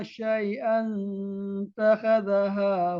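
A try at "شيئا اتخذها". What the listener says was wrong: itu dibaca syai'a. Kalau di sini tidak ada ditulis nun ya. Cetakan sini tidak ada dituliskan nun. Jadi cara bacanya itu kan ada tanwin ya Pak? Iya ada tanwin, maka diganti satu dengan huruf nun. Nun namanya nun wisal namanya, yang menyambungkan antara tanwin dengan alif ya. Syai'anit takhadhaha.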